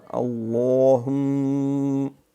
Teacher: ہے، اللہ موٹا کر کے ہم، میم کے اوپر شد ہے، میم اور نون پہ جب بھی شد آئے تو یہاں غنہ ہوتا ہے، ناک میں آواز لے جاتے ہیں ، یہاں ناک کے مسے میں، اس کو خیشوم کہتے ہیں،